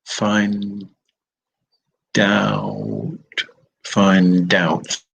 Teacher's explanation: the consonant from the end of one word has gone and joined the vowel at the beginning of the next word